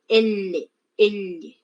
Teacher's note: Las laterales sale por los costados de la lengua